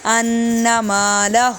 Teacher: انا پہ نون مشدد کا غنہ کریں گے